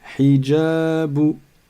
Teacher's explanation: la première lettre, vous n'allez pas la prolonger parce qu'il n'y a pas de ya après elle. Il n'y a pas de prolongation.